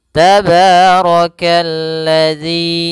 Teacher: Kemudian rnya dibaca tebal karena dia ro berharakat fathah. · Kemudian di sini ada alif lam syamsiyah yaitu alif dan lam yang dia ditulis tapi tidak dibaca sehingga langsung dihurufkan ke huruf lam yang berharakat tasydid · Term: ra-nya dibaca tebal